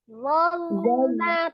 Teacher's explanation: lo-nya ketika sukun jangan sampai mantul, ditahan